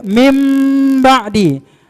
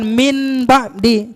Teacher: Jadi suara nun berubah jadi mim. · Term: iqlab